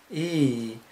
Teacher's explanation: The tongue is very high. The front of the tongue is up towards the hard palate. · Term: vowel E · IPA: /i/